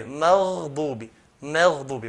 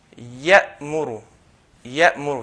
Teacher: if you notice between ghain and the next letter, there's no gap. So, maghdubi, straight away, maghdubi, maghdubi. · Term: ar-rakhawa